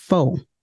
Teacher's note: In many contexts, speakers of AVE don't pronounce that final R at the end of words. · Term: R-lessness